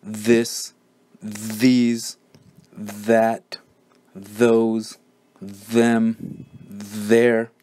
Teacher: makes the voiced dental fricative sound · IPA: ð